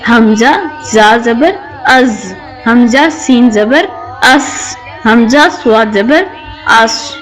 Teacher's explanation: زا، سین اور صاد کو حروف صفیریہ کہتے ہیں، یعنی کہ سٹی والے حروف۔ جب زبان کی نوک اوپر اور نیچے کے دانتوں کے اندرونی کنارے کے قریب آتی ہے تو سٹی جیسی تیز آواز کے ساتھ یہ حروف ادا ہوتے ہیں